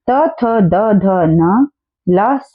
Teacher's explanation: ये सारे के सारे दंत्य वर्ण होते हैं, दांतों की मदद से बोले जाते हैं।